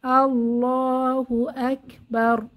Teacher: হরফে যদি জবর পেশ হয় র মোটা করে পড়তে হয় তাহলে এখানে আকবার র মোটা করে পড়তে হবে